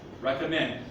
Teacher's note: I tend to make the M kind of hard.